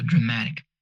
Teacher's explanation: The stress here is on the syllable before ik. Words ending in ik in English are stressed on the syllable before them.